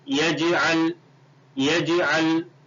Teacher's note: یجعل, یا جیم زبر یج, جیم کے اوپر جزم ہے اس لیے پڑھتے وقت جیم کی آواز لوٹے گی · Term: حروف قلقلہ